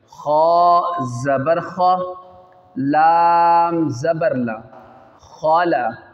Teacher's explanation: خا، صاد، ضاد، طا، ظا، غین، قاف، یہ 7 ورڈ کہیں بھی آ جائیں اس کو پر پڑھیں گے. تو یہاں پہ حروف مستعلیہ میں سے خا آ رہا ہے، اس کو موٹا کریں گے